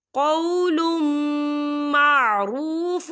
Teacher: قول معروف ومغفرۃ، یہاں دیکھیں قولم لام کے اوپر تنوین ہے اور تنوین کے بعد جو ہے میم آ رہا ہے، اور میم جو ہے حروف یرملون میں سے ہے، تو یہاں پر ادغام ہوگا، ہم غنہ بھی کریں گے